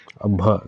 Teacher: भ वर्ण क्या होता है ओष भी होता है महाप्राण भी होता है और घोष वर्ण व्यंजन होता है